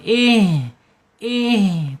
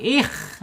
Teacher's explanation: Himnya h-nya ada di makhraj tenggorokan bawah. Jangan lupa. Kemudian secara sifatnya ada di alhams mengalir. Mengalirnya napas ketika dia sukun.